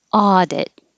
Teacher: the first vowel is ah like awesome